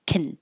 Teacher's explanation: so just make a k and an N very quickly